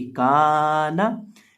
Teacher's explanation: अब यहाँ इस लफ्ज़ के अंदर हम काफ को खींच के पढ़ेंगे, काफ को लंबा करेंगे, काना। लेकिन अक्सर लोग गलती यहाँ ये करते हैं कि वो नून को भी खींच देते हैं, वो पढ़ देते हैं काना काना।